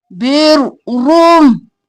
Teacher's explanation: वलाकिन्नल बिर्रम, नल बिर्रम, रो मोटा, रो के ऊपर पेश होगी तो मोटा, रो के ऊपर जबर होगी तो मोटा, रो के नीचे जेर होगी तो रो बारीक।